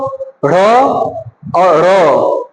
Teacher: जब बोलेंगे आप ढ़ और र तो जरूर जीभ मुड़ेगा और श्वास बाहर आएगा, तो उसी को बोलते हैं द्विगुण व्यंजन।